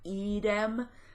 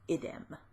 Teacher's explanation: The only difference between the masculine nominative singular and the neuter nominative singular is the length of the vowel. So the masculine has a long I and is idem, and the neuter has a short I and is idem